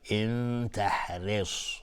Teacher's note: تحرص، را ترقیق است اینجا. ان تحرص با صاد از حروف استعلاء غلیظ تلفظ میشه